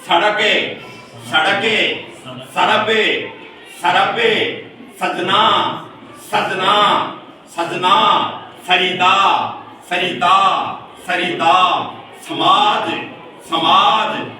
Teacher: ये दंत्य दांत से उच्चारण होता है